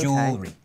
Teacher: Well, no, in British English, the jewel is the part you stress in the word, so re just becomes one sound